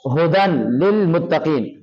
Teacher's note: ये काफ को मोटा करके पढ़ना है